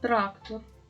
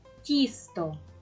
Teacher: в цих словах ми чули перший звук як і твердий приголосний Т так і М'який приголосний ть